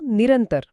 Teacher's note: विसर्गाचा र होतो. >> जसं >> जसं निह अधिक अंतर इथे विसर्गाचा श्वास बाहेर पडताना तो पुढच्या अ मध्ये मिसळतो आणि मधला दुवा म्हणून तिथे र तयार होतो. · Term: विसर्ग रकार संधी